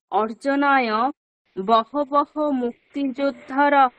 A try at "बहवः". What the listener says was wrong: বহটা না, প্রথম বটা বর্গীয় ব হবে, ঠিক আছে?